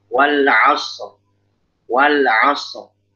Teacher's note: Shotnya dialirkan dulu, rokhawahnya mesti jalan.